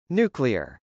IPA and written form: nˈukliɚ (nuclear)